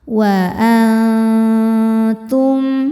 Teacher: Wa antum al ada hukum ikhfa hakiki aqrab karena nun sukun bertemu dengan huruf ta. Cara membacanya nun disamarkan menuju makhraj ta disertai bunyi dengung. Samarnya banyak, dengungnya sedikit karena ta makhrajnya masih dekat dengan nun. Jadi ujung lidah kita mau disentuhkan dengan pangkal gigi seri atas ya.